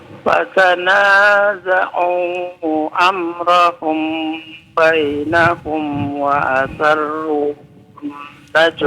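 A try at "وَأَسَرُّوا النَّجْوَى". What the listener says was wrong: Wa asarrun tasdid dua-duanya ya.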